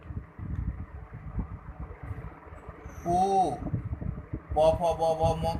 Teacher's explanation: ओठ से उ, प फ ब भ म का होता है।